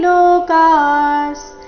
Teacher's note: ವಿಸರ್ಗದ ಉಚ್ಚಾರಣೆ ಅರ್ಧ ಸ ರೀತಿ